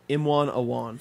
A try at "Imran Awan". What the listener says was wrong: No, there's an R in there. Yeah, Imran.